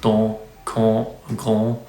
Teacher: Open central unrounded vowel, nasalized